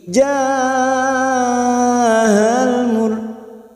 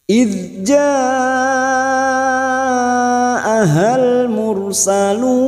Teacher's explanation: Hamzah itu sifatnya siddah dibaca harus tegas harus jelas